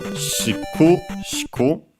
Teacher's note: its accent is on the ku, on the first ku